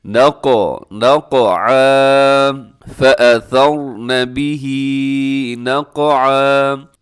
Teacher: قاف کو بھی آپ نے ہلانا ہے کیونکہ قاف حروف قلقلہ میں سے ہے اور اس کا قلقلہ کرنا واجب ہوتا ہے۔